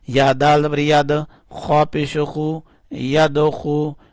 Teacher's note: دال کے اوپر کلکلا کرنا ہے یعنی دال کو اٹھانا ہے